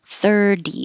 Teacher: we don't say the T. 30. It changes to a D. However, I was going to say what we talked about 30, 40, 50, 60, 70, 80, 90, all T's change to D's.